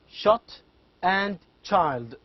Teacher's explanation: sounds formed with the tongue and the hard palate the initial sounds in the words shot and child shh which